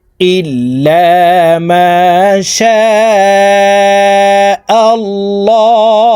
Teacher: এই শিনকে 4 আলিফ টেনে পড়তে হবে, কারণ মদের হরফের উপরে মোটা চিহ্ন বা মেহামজা মধ্যে মুত্তাসিল 4 আলিফ টানিয়া পড়িতে হয়।